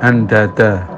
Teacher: Oh ya, untuk ikhfa'nya nun bila bertemu dal maka ikhfa yang betul seperti mengikhfakan ta, yaitu ikhfa a'la, di mana kadar ikhfa'nya lebih tinggi daripada dengungnya. Artinya dengungnya itu tidak seberapa menusuk ke pangkal hidung. Seandainya ketika kita ucapkan andada ya, itu hidung ditutup masih bisa keluar.